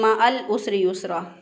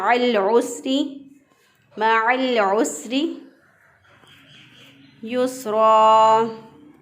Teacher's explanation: आइन को वस्ते हलक से गले के दरमियान से अदा करना है